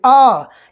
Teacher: लेकिन अगर वहीं पर आपको बोलना हो आ, तो थोड़ा सा लंबा आप खींचेंगे। आ यानी आवाज़ को लंबा खींच रहे हैं, यानी समय ज़्यादा लग रहा है।